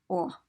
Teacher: diphthong but we have oh oh it's a very rounded or it's like ah but you close your lips around that sound